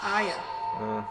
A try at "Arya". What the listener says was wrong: there's definitely an R in there.